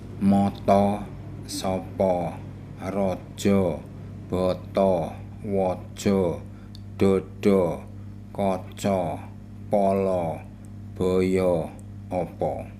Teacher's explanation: In the word moto, to is a final open syllable. Letter A in this position, final open syllable, is pronounced O,